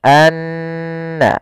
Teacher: Maka cara membacanya tahan dulu n-nya, anna, baru dilepas. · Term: bacaan gunah, gunnah